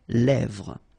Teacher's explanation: this E accent grave here, it gives you the E, really open sound